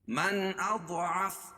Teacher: من اضعف، یہی ہے ظاہر، اس میں غنہ نہیں ہوگا، نہ ادغام ہوگا، نہ غنہ ہوگا، نہ اخفا ہوگا۔ من اضعف، ضاد کو موٹا پڑھیں گے کیونکہ حروف مستعلیہ میں سے ہے